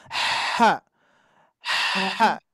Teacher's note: kalau H kecil itu bunyinya hembusan angin dulu Bu